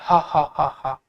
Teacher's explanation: जब स्वर यंत्र का पूरा मुख खुल जाता है तो उस समय हाहा की आवाज आती है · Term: स्वर यंत्र मुखी ह